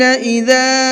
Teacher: اس چھوٹے مد کو 1 سے 3 الف کے برابر کھینچ کر کے پڑھیں گے۔ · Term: چھوٹا مد